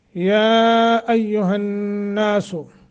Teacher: या को लंबा करना है, मद्दे मुनफसल है। और हन्नासु नून मुशद्दत है, गुन्ना करके पढ़ेंगे।